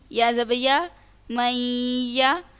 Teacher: اب جہاں پر نون ساکن کے بعد حرف آ گیا یا, جو کہ یرملون کا پہلا حرف ہے یا, تو ہم نے کیا کیا؟ نون کو چھپا دیا یا کے اندر, ٹھیک ہے. نون کو ہم نے سائلنٹ کر دیا. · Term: ادغام